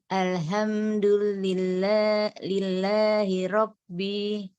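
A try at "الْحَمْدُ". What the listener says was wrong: Ya, Ibu boleh yang ini dibaca ha, tenggorokan tengah, coba. Al-ha, ha. Jangan tenggorokan bawah, karena kalau tenggorokan bawah ini merubah makna. Kalau tenggorokan bawah, alhamdu artinya kehancuran bagi Allah. Pastikan ngambil dari tengah tenggorokan. Al-ha. Ya, al-ha. Ya, tasdidnya nanti kita sempurnakan.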